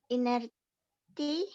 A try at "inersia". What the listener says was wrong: Inner. T-nya coba diganti S. Baca. Inersia.